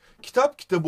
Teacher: p sertken b olmuş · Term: ünsüz yumuşaması